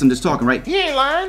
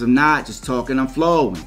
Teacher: i'm flowing right right because i'm stretching the vowels out